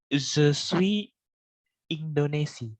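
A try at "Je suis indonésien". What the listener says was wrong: IN itu dibacanya eng. Ya, eng bisa ang juga bisa sebenarnya. Pakai sengau dia. Eng atau ang.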